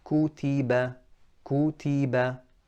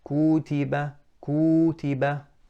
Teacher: the length of time it takes to say ku should be the same exact time as ti, as ba. Kutiba. So they are all consistent.